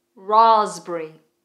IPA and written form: rɑːzbərɪ (Raspberry)